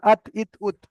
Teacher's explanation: আর 11 নম্বরে রয়েছে তা দাল ত, জিভের আগা সামনের উপরের দুই দাঁতের গোড়ার সাথে লাগিয়ে তা দাল ত উচ্চারিত হয়